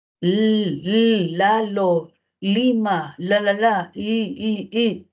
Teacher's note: usted va a sentir como su lengua se pega a la zona alveolar y gira y gira para dejar que el aire salga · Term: modo lateral, lateral